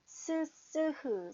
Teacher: 공기 흐름이 좁아서 공기가 나가긴 나가는데 억지로 비집고 나가는 듯한 느낌이 납니다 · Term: 마찰음